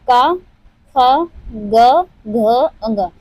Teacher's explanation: क, ख, ग, घ, ङ यानी क वर्ग जितने हैं क वर्ग जितने हैं वह सब कंठ से उच्चारित होते हैं